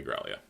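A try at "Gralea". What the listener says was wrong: Growly. They don't pronounce the A. No, it's like... Growlay. No. At least not in episode Prompto.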